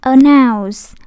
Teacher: Cái em thấy người ta đánh dấu sắc ở đây, cái dấu âm ở đây, nhưng mà người ta đâu có đọc announce, đúng không? Đâu có đọc dấu sắc đâu. Người ta đọc thanh ngang, announce.